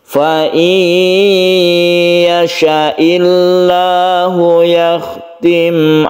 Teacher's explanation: bighhunah idgham bighunah artinya idgham itu masuk buna artinya dengan dengung nun mati ini melebur ke ya sehingga menyebabkan ada tasdid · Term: Idgham bighhunah